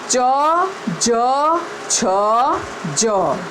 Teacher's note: તાળવાથી મદદથી આપણે બોલતો અવાજ તાલવ્ય કહેવાય.